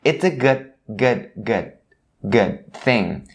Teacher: you don't hear them enunciating the D sound at the end of this word, but keep in mind that they stop it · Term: ending sound